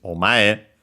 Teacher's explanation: But yeah, we add the honorific prefix o, and yeah, we get this omae, actually unaccented, so be careful, despite mae on its own being accented.